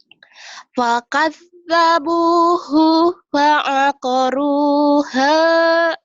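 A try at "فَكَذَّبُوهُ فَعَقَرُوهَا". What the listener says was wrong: hu-nya pendek ya. Fakadzabuhu fa'aqaruha.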